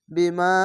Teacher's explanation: মাদ্দে আরজি তিন আলিফ টেনে পড়তে হবে